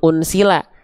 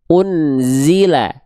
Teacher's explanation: Huruf zai itu harus dilafalkan jangan sampai berubah menjadi huruf sin